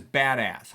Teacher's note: spondee, the words are both stressed.